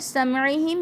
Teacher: میم ساکن کے بعد عین، اظہار شفوی کا قاعدہ، واضح کر کے پڑھا جائے گا